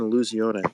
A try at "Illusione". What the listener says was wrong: Don't make the E like you're some French fucking architect. It's Illusione.